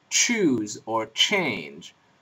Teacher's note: consonant an Africa consonant is basically a doubly articulated consonant basically it's a plosive like followed immediately by a fricative so if you join T and Sh suddenly you have ch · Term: affricate